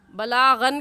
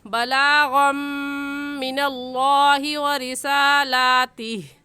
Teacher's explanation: اس غین کو میم کے ساتھ ملائیں گے کیونکہ یہاں پر ادغام ہو رہا ہے۔ بلاغن کہنا غلط ہے اور صحیح کیا ہے بلاغم من اللہ و رسالاتہ۔